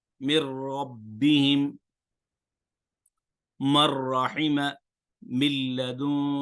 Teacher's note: مر رب پہ بھی غنہ نہیں ہوا، مر رحمہ پہ بھی غنہ نہیں ہوا